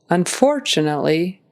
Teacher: The word unfortunately, the emphasis is on that second syllable. Unfortunately, make sure you get the T in there.